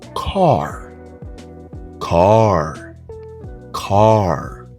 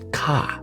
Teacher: You don't say ka, you say car. The R is stressed.